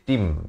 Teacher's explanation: Ba bersabdu, Dabbatim. Dan di sini tanwin bertemu mim idgham bi gunnah, masuk berserta dengung. Daripada dabbatin jadi tim, ya.